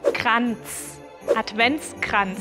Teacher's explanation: En Kranz, la R es gutural y la Z al final suena como la TS al final de Advents.